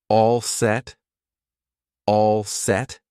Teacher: we'll just use two words with a rising intonation to show it's a question